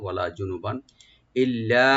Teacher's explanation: বার উপর যে তানবিন আছে এখানে আমরা এজাহার করবো, গুণনা হবে না